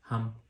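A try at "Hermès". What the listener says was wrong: Not hum. You don't pronounce the H.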